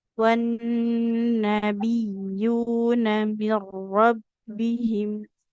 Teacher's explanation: Wan nabiyuna, tapi huruf ya yang kita tekan dan kita alirkan suaranya.